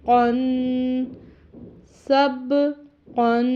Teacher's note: اور قوف کے تلفظ کا خیال کرنے کے کن نہیں پڑھنے سے حلق سے یاد آتا ہے موٹا قوف پڑھا جاتا ہے یعنی پر پڑھا جاتا ہے۔ قوف 2 زبر الف قن سب قن۔